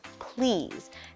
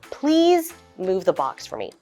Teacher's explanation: instead of an S at the end let's pretend it's a z